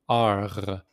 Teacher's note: R in French is the most difficult letter to pronounce because you pronounce it with the the throat not with the thong.